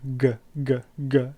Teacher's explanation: velars because you use the soft part at the back of your mouth on the top